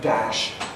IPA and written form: dæʃ (dash)